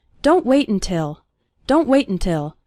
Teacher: when speaking fast the first syllable of until is barely pronounced